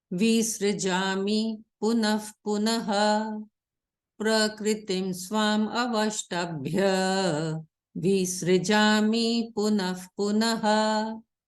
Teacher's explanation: Now we are not going to say punaha, punaha. Now because this visarg is coming before pa, so we are going to sound it as fa. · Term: sound of fa